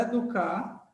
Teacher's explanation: a palavra educar, a última sílaba é forte. Ou seja, ela é uma palavra oxítono.